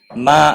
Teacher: ما الف مدہ ہے ایک الف کے برابر کھینچ کر پڑھیں گے.